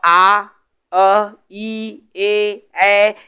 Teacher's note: आ, अ, ई, ए, ऐ, इससे हमारे होठ गोल नहीं हो रहे हैं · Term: अवृत्तमुखी